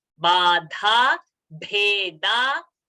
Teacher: Then also note nir ba alpa prana, dha mahaprana, and then nir bhe mahaprana and da alpa prana